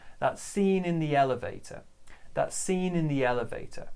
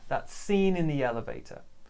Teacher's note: So stress on scene and elevator.